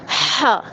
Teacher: ہا کو ہم نے حلق سے نکالنا ہے۔ حلق کی ہڈی کو ہم تھوڑا سا پریس کریں گے، نیچے کی گلے کی ہڈی کو، تو پھر وہ ہمارا نکلے گا ہا۔